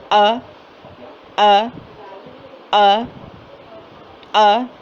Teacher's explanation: حمزہ سخت اور جھٹکے والی آواز ہے اور منہ کے خالی حصے سے ہی اس کی ادائیگی ہو رہی ہے